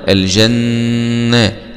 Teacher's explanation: نون شدة فتحة مع الغنة